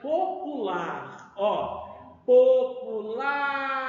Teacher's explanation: quanto a sílaba tônica Então o que são na verdade oxítona a última sílaba é a mais forte